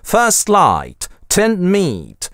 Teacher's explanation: /t/ /d/ могут выпадать за счет того, что предыдущий согласный-тянучка продлевается